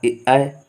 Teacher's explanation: ठीक है, फिर आपका आ रहा ए, तो ये जो है कंठ तालब्य मतलब कंठ और तालब्य दोनों से मिल करके आवाज़ निकलती है